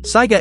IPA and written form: ˈsaɪɡə (saiga)